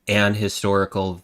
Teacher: >> Well, it's because some sometimes you sometimes in certain words the H is the H sound is like a soft H and it gets dropped and so it's treated as a vowel sound